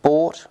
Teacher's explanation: We have or as in bought, which is mid, back and rounded.